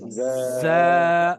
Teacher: हम्म, अब जो 3 लफ्ज हैं उसमें हमें चाहिए फ्रिक्शन, ठीक है, यानी कि आपके दांतों को मिलना चाहिए। सही है, आप अपने दांतों को मिलाकर फ्रिक्शन साउंड निकालेंगे।